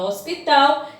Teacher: a sílaba mais forte da palavra hospital é a última então ela é oxítona é assim que é chamada toda a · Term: sílaba tônica